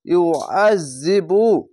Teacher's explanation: ইউআযিবু আইনটিকে মোটা করে গলা চিপে পড়বেন। ইয়া পেশ ইউ, আইন জাল জবর আজ, ইউআজ, জাল জের জি, বা পেশ বু, ইউআযিবু।